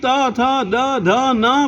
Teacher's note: जबान दांत के नजदीक रहेगी।